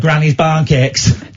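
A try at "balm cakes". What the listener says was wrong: Barn cake? It's not barn, it's balm.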